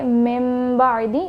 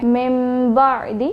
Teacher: اب یہاں پر نون ساکن کے بعد با آ رہا ہے تو ہم من بعدی نہیں پڑھیں گے بلکہ ہم پڑھیں گے من بعدی. میم کا ساؤنڈ آ رہا ہے اور ہم غنہ کر کے پڑھ رہے ہیں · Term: اقلاب